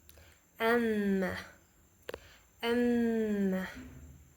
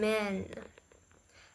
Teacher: The airflow is diverted into nasal cavity. This occurs when the velum, soft part of the palate, is lower, allowing the air to exist through the nose.